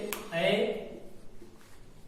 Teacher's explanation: होठों की स्थिति गोल नहीं है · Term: अवृत्तमुखी